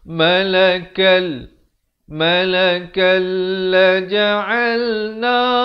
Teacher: Humalakal, di sini asalnya malakan, kaf tanwin 2 di atas bunyikan. Tapi bila datang lam, hukumnya idgham bila gunnah, masuk tanpa dengung. Kita baca malakal laja'alna, 2 harakat.